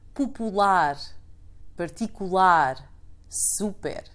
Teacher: Let me also add some useful adjectives, since all end in -r note how in Portuguese we stress the last syllable